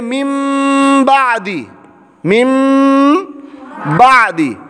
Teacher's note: نون ساکن کے بعد با ہے، اب اس نون کو میم سے بدلنا ہے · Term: اقلاب